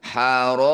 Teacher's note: Cara bacanya ro panjangkan 6 harokat, huruf terakhir kita sukun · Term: mad alif disukun